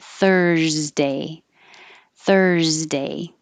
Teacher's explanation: The vowel is thurs. So keep your airflow going and keep your voice on while you make a Z